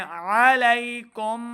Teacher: علی نہیں ہوگا، حمزہ کی آواز نہیں آنی چاہیے. ہماری غلطی کیا ہوتی ہے، ہم پڑھ رہے ہوتے ہیں علی حمزہ کی آواز ہے.